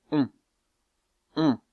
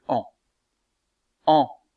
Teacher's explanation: la voyelle on est un peu plus fermée un peu moins ouverte que la voyelle en